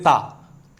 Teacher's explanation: ता बोलेंगे तो आपका जो जीभ है ना ऊपरी दांतों से टच होके आएगी, ता। ठीक है, आगे चलते हैं।